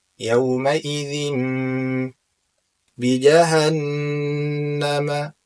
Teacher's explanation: Pada kata yauma idzin di sini ada tanwin berjumpa dengan ba. Yang mana ketika tanwin berjumpa dengan ba hukumnya adalah al-iqlab. Maka kita baca dalam keadaan gunnah. Gunnah yaitu gunnah secara sempurna.